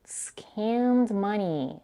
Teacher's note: Scammed is stressed, louder, longer, and said with a higher pitch. This is the most important word in this line.